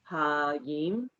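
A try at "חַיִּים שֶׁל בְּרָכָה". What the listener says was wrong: You're saying ha. it's a chet. So there's a guttural. So it's chayim. I know those guttural ones are always a pain, but it does make the word what it is because it's either a chaf or a kaf.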